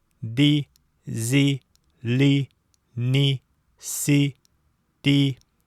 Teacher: Особо следует обратить внимание на то, что перед «и» с 2 точками эти 6 согласных не смягчаются.